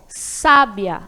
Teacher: a sílaba tônica é a primeira sílaba, sa